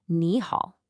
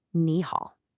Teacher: For the language to flow better when you have two third tones in a row the first third tone automatically changes and is pronounced like a rising second tone. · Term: tone sanji